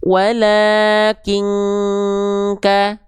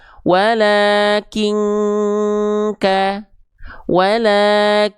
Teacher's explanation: Walaking n-nya udah enggak ada disamarkan, didengungkan masuk hidung ya dan ditahan dua harakat. Ketika samar dengung sambil bersiap-siap melafalkan huruf kafnya. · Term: ikhfa